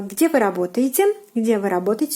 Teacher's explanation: So your intonation have to go higher at the ending of this question.